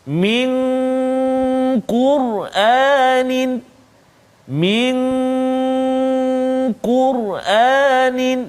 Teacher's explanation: nun mati bertemu dengan qaf, min qur'anin, min qur'anin, dengung dua harakat